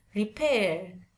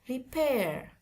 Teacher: Sebenarnya itu ada 2 versi. Kalau British itu cenderung R-nya nggak terbaca atau tepatnya tidak terdengar. Tapi kalau yang American itu terdengar. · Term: R sound